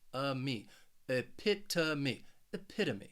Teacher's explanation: with this word is because of that third and fourth syllable that third syllable you have the schwa that uh sound and that final syllable it's just me that long e so that ome spelling it is really pronounced uh me epita